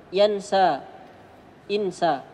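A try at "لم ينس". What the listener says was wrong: Ya, pendek ya, pendek. Ya, pendek sekali ya.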